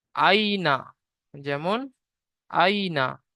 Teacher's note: ইয়া সাকিনের ডান দিকে যাবার এসেছে, ইয়ালিন হবে। ইয়ালিনকে নরম আওয়াজে তাড়াতাড়ি পড়তে হবে, টান দেওয়া নিষেধ।